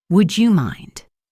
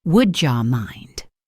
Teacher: Would you is another classic blend, becoming would ya. So the question is, would ya mind if I open the window?